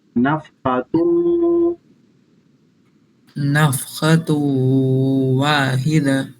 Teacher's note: تا کو واو میں ادغام کر کے دونوں کو اکٹھا پڑھنا